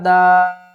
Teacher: تو یہاں پر اس ورڈ کو بھی ہم نے ٹھیک کرنا ہے، دال الف مد زبر دا، بڑی مد ہے، 3 سے 5 الف کی مقدار کھینچ کر پڑھیں گے